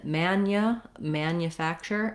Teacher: even though there's no letter representing this yeah sound we do have a sound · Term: ye glide